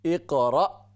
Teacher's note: را کے بعد یہ حمزہ ساکن ہے، جھٹکے کے ساتھ اس کو پڑھیں اور کلیئر واضح کر کے اس کو پڑھیں